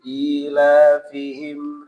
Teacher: Nah, i-nya panjang, la-nya mad asli. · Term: mad badal